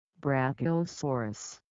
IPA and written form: ˌbrækiəˈsɔːrəs (Brachiosaurus)